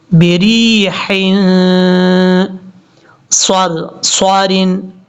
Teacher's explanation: صاد فل موت کے پڑھا جائے گا کیونکہ یہ حروف مستعلیہ میں سے ہے